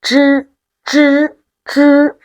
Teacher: The tongue tip needs to be turned up and coordinated with the front part of the hard palate. When we say zh, the tongue tip first touches the hard palate and then opens a gap to let the air flow. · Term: cacuminal